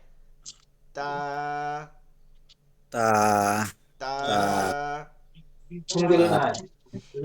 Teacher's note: আমরা সাহিত্য ত যেটা পড়ছি এটা ত, আর এটা হচ্ছে তা। এটা চিকন করে তয় আকারে তা বাংলার মতন পড়তে হয়।